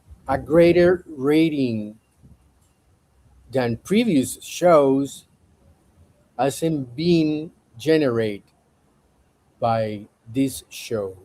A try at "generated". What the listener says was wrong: I cannot give it to you because the correct pronunciation of generate in the past tense is generated. And you did not pronounce the ED.